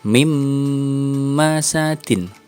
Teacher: nun sukun bertemu dengan mim ini juga harus ditahan lebih lama mimpi Mas Adin tidak boleh lagi terbaca n dengan jelas kemudian